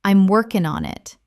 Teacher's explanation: I'm working on it often sounds like I'm workin' on it. The G drops, sounds link together.